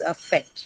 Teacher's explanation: the first one is going to be of course the schwa. So it cannot take the stress. Hence it goes to the second syllable.